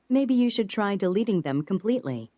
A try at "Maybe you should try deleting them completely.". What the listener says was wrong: 트 발음을 거의 안 하고 있죠. Should try deleting them.